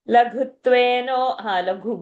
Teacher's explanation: ghu is a mahaprana also and dvitva also